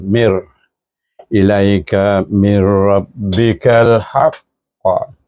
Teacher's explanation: Jadi dibaca dengan min, dia itu dengan idgham tapi tak boleh didengungkan